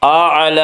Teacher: ربہ الاعلی، لام کے اوپر کھڑا زبر ہے، کھڑا زبر کو 1 الف کے برابر کھینچ کر پڑھیں گے